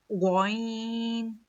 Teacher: आइन हलक के मतलब गले के दरमियान वाला हिस्सा मतलब बीच वाले हिस्से से ऐन अदा होता है। ग हलक के मतलब गले के ऊपर वाले हिस्से से गन अदा होता है। · حلق کے مطلب گلے کے اوپر والے حصے سے غین ادا ہوتا ہے.